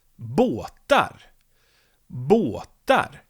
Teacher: You can hear that I go up, bå. And then when I go down, båt, I go up again. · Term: accent 2